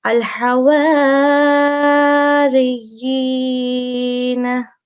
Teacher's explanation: we have maksur and mushaddad ya, and it is followed by ya madda. So we will be prolonging this with 2 seconds and also pronouncing it clearly.